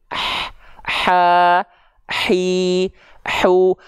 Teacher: mengalir dengan deras nafasnya karena dari segi suara dia disandingkan dengan sifat rokhwah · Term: mengalir nafas